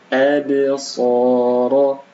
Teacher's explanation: Ba sukun maka dipantulkan. Absara, so dibaca panjang 2 harakat.